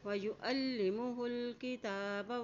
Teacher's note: ہا کی پیش کو لام کے ساتھ ملائیں ، تا کے پر کھڑی زبر اس کو ایک حرکت لمبا